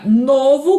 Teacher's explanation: A palavra novo, com timbre fechado no singular